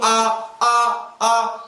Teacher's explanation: वह स्वर है जिनके उच्चारण में मुख सर्वाधिक खुलता है, क्या कहलाएगा, विवर्त स्वर कहलाएगा।